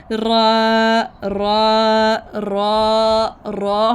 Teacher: ज़ुबान की नोक को हमने ऊपर मसूड़ों के यानी कि गम से लगाएंगे। गम्स जो होते हैं ना, हल्की सी वाइब्रेशन देनी है